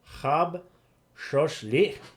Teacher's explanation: The glottal stop at the end. I keep wanting to turn it into something that it's not.